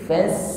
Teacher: Kalau ringan dan tipis itu jatuhnya pada huruf sin, fas, karena lidahnya sin itu istifal, tetap di bawah sehingga bunyinya tipis